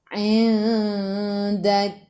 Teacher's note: Matikan dengan huruf kaf. Kaf sifat hurufnya hamas. Jadi bila hamas kena ada sedikit sahaja angin. Jangan banyak.